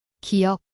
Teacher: 기억 소리를 낼 때 혀가 목구멍 쪽에서 막히죠.이 이 글자는 바로 그 모양을 본 거예요.